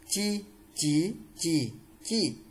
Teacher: Đây là âm mặt lưỡi, luồng hơi đẩy ra nhẹ nhàng.